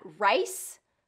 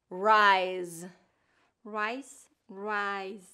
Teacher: that voice and voiceless difference for S and Z